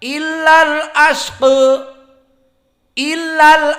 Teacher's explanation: Abu Amr, qiraah Ad-Duri an Abi Amr dari qiraah Sab'ah juga membaca dengan taklil. Maknanya dia imalah as-sughra.